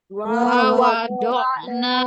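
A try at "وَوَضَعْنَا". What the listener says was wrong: Nah, nanya cuma 2 harokat.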